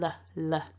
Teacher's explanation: It's a clear L, or a light L, depending on who you're talking to, which means the tongue is kind of flicking out a little bit, and we want the sound to be coming forward out of the mouth.